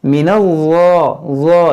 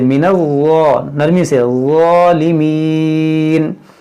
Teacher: ये नून ज़ा मिलाएंगे, नून को ज़ा से मिलाएंगे